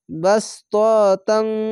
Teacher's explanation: ইখফা গুন্না বাংলা অনস্কার মতো পড়বেন